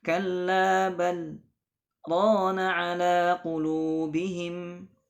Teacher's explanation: berhenti sejenak, sekedar satu alif atau dua harakat, tidak mengambil nafas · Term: sakta